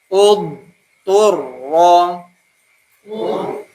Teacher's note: Huruf thnya tidak keluar nafas